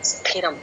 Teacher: ఇక్కడ చాలా మంది మహాప్రాణం గట్టిగా చెప్పరండి